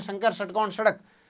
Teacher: पहले शंकर वाला तालवी से, फिर मूर्धन्य से और फिर दंत्य से